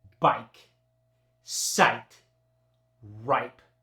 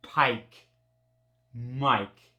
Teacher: when the long eye is followed by a voiceless consonant like Pike it doesn't change at all it just gets that hard long eye for example bike sight